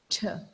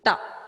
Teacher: the tip of the tongue, this part, should touch the alveolar ridge to make the right sound, t. But many of us have a tendency to roll our tongue and touch the hard palate.